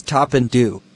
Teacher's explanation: Te and de are alveolar, so the tongue is pressed against the alveolar ridge.